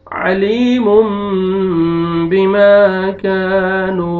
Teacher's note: یہاں پہ دیکھیں تنوین کے بعد بار ہے جو ہم قاعدہ پڑھ رہے ہیں، اس کو تنوین کے نون کو میم میں چینج کریں گے اور ناک میں مد لے کے جائیں گے